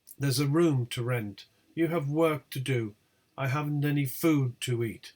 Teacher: being on rent do and eat the tonic syllable is room the tonic syllables are room work and food in these particular sentences so this is an exception to the rule common adverbials do